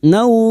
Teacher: Jangan dipantulkan ya bukan qalqalah. Yagnau fathah bertemu wau sukun kita lunakkan huruf lin · Nau fiha fiha masing-masing dua harakat kita panjangkan. Kasr diikuti ya sukun dan fathah diikuti alif. Dua harakat kita panjangkan mad thabi'i.